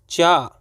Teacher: च का उच्चारण स्थल क्या होता है तालू होता है